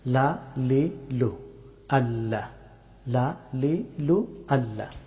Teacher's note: লাম হরফটি উচ্চারিত হয় জিহ্বার সামনের অংশের কিনারা এবং উপরের তালুর শক্ত অংশ ছুঁয়ে